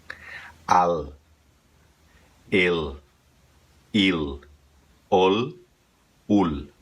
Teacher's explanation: a vogal sai lá de dentro limpa e acaba com a língua entre os dentes para fazer o som do L